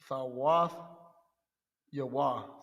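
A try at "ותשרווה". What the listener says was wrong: You got a ra in there. Wath Yarawa. Wath Yarawa.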